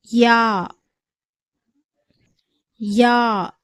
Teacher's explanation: யாவுடைய மஹரஜ் பிறப்பிடம் அலிஃப் வாவ் போன்ற எழுத்துகளுடைய மஹரஜ் பிறப்பிடம் மாதிரியே தொண்டைக்கும் வாய்க்கும் இடைப்பட்ட காலியான இடத்திலிருந்து யாவுடைய உச்சரிப்பு வெளியாகிறது.